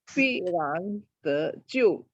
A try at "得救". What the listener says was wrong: Ya, ya, jangan lupa te-nya 2.